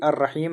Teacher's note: الرحیم ہے تو لام سائلنٹ، را پر تشدید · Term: حروف شمسی